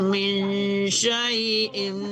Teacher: Jangan min ya, tapi min disamarkan ke shin, antara nun dan shin ya, itu dengung itu ya.